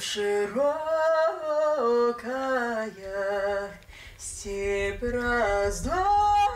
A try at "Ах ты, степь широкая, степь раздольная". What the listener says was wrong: Ты просто, ты информацию, а ты попробуй, ты любуешься этой степью. Ну, подушевней. И покажи нам ее, красоту этой степи.